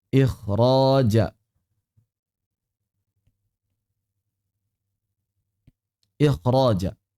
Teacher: huruf kha apabila terletak sebelum ra maka dia jadi tebal.